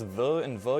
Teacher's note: they both use your top teeth as a way to kind of restrict the air but still let it through